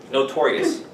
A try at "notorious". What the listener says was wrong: R's a little bit less. Notorious.